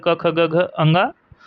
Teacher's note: क वर्ग पांचो अक्षर क ख ग घ ङ और ह हो हो हो जाएगा अकुह और ये जो विसर्ग है विसर्ग विसर्ग का भी उच्चारण स्थान कंठ होता है तो कभी-कभी आ जाए विसर्ग इनका उच्चारण स्थान क्या होगा तो इनका भी उच्चारण स्थान क्या होगा कंठ होगा कंठ की सहायता से बोले जाते हैं